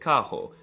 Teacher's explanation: The R is very often pronounced as an H, like in the word carro.